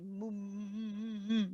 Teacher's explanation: You make the sound travel through your nose when you say the mu, when you say mu, that's got the sound traveling through the nose, but you don't want to carry that across into your mud.